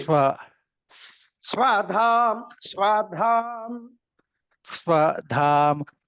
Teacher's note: కింద కలిపితే స్వ ఒకటే అనుదాత్తం చెప్పండి